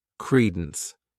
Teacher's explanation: This word has 2 syllables, and the stress is on that first syllable